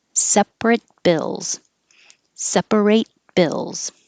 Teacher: If there's a consonant after, you won't hear the T because now it's just staying in that position.